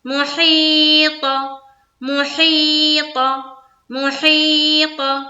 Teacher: ہم نے مخرج سے جو ادا کیا ہے، مخرج سے ادا کیا ہے، منہ بھر کر ادا کیا ہے، اور پتہ ہے کہ منہ بھر کر تا ادا نہیں کی جاتی بلکہ طا ادا کی جاتی